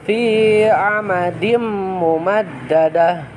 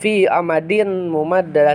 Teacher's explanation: Jadi asalnya fi amadin, karena si tanwinnya itu bertemu dengan huruf mim, karena mim termasuk idgham biguna, maka dibacanya atau membacanya dimasukkan ke dalam mim